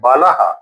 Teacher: कुल मिलाकर कहने का मतलब है विसर्ग उसको कहेंगे जो स्वर पर आश्रित एक महाप्राण ध्वनि होती है जिसका उच्चारण होता है है जैसा होता है।